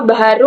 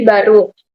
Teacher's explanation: sinkop, penanggalan bunyi di tengah kata. Contoh baharu menjadi baru.